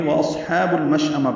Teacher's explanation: واو ہونٹوں کی نا تمام گلائی سے ادا ہوگی، صاد ساکن پر پڑا جائے گا، ہمس ہوگا، ہا کو 2 حرکات لمبا کریں گے، با کو لام سے ملائیں گے۔